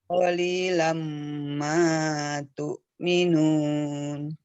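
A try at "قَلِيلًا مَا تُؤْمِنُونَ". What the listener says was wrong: Namanya kepanjangan, 2 saja. Nah, jadi untuk matobi'i, kalau jenengan di awal baca, terus di belakang agak kepanjangan, yang dengar pasti ini tidak pas ini gitu kan?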